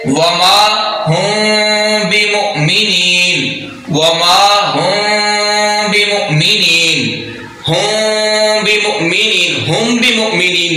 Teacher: اگر میم ساکن کے بعد با آ جائے تو میم ساکن پر اخفا ہوگا، یعنی میم ساکن کو خفیہ کر کے پڑھا جائے گا، چھپا کر پڑھا جائے گا، غنہ کے ساتھ اخفا ہوگا میم ساکن پر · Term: اخفاء شفوی